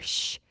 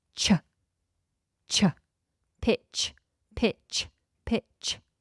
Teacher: So the T kind of gets swallowed into the CH, but you still have to make this strong ch sound.